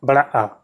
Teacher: तो इसमें जो है एक ही स्वर आ जाता है, बड़ा आ। तो इसमें जो है मुंह आपको सबसे ज़्यादा खोलना पड़ता है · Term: विव्रत